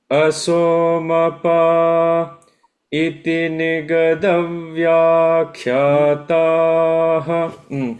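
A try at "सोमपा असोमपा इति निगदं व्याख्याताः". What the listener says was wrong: It's flat, yeah, Shruti is off. That's flat. So count of 3. Somapa, asomapa, iti nigadav vyakhyatāha. Iti nigadav vyakhyatāha.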